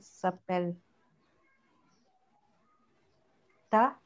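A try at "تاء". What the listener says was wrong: Il faut allonger un peu les noms. Pour le Ta aussi, vous allongez un peu. Ta.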